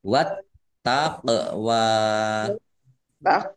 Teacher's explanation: sukun bacaan qalqalah dibaca memantul ditampakkan pantulannya